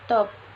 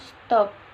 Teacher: T pada stop disesuaikan atau diasimilasikan artikulasinya dengan S yang mendahulunya sehingga sama-sama laminoplatal.